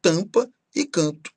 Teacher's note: os sons que eles representam são sempre as vogais nasais